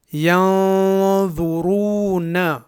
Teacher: یہاں اس نون کا اخفا ہوگا کیونکہ یہ ساکن ہے اور اس کے بعد ضا حرف ہے جو حروف اخفا میں سے ہے